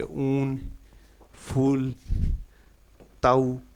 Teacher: यह पश्च भाग से बोला जाता है और संवृत है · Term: बड़ा ऊ